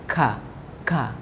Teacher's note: seperti makhrajnya huruf qaf, namun pangkal lidah itu diturunkan.